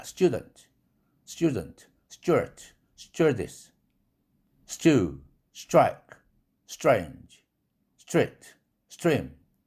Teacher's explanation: 추의 경음화된 발음, 즉 쭈에 가까운 소리로 나더라 이겁니다. 그래서 student가 아니라 쭈에 가깝다.